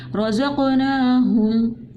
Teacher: قلقلہ کیا، اس کی آواز واپس پلٹ کر آ رہی ہے